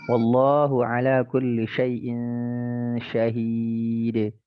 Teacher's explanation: Qalqalah itu akhirannya tidak boleh ada e-nya.